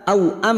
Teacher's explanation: Mim sukun dibaca jelas tanpa mendengung. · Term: idhar syafawi